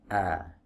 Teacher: Hamzah yang ini sama dengan hamzah yang ini dari sisi pelafalan ya. Makhrajnya ada di tenggorokan bagian bawah atau di area pita suara. · makhrajnya ada di tenggorokan bagian bawah atau di area pita suara a. Baik, kemudian saat membaca fathah yang ada di atas hamzah wasal ini, ya tentunya fathah yang kita munculkan aslinya tidak ada fathahnya, tapi kita baca dengan fathah. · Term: hamzah qata